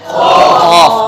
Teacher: زبان کی جڑ اور، ماشاءاللہ خوب آگے آگے بول رہے ہیں. زبان کی جڑ اور تالو کا نرم حصہ جو ہے وہاں سے قاف ادا ہوتا ہے.